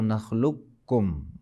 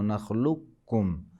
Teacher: قاف کو پڑھتے نہیں، اس کے بدلے میں کاف کو جو ہے ڈبل پڑھتے ہیں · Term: ادغام